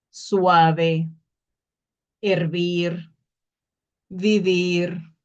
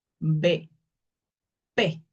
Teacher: Incluso en la V cerramos la boca, pero no tanto como la B.